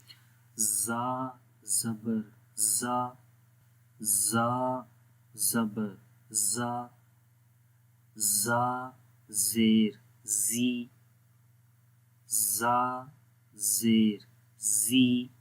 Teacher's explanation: زا میں اس کی زبان کی نوک جو ہے وہ ثنایا سفلا یعنی نیچے کے جو دو دانت ہیں سامنے والے ان کے کناروں پہ لگتی ہے، اور اس سے کے ساتھ اوپر والے دانت اس کے ساتھ یعنی کہ ثنایا علیہ والے دانتوں کے ساتھ آلموسٹ ٹچ بھی رہتے ہیں۔